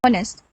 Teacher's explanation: For the intensity, so the maximum intensity appears on the first syllable, which is on, and then it reduces when I said nest, which is another syllable.